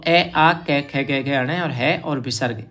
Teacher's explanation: अ आ क ख ग ण और ह और विसर्ग इनका उच्चारण स्थान कंठ होता है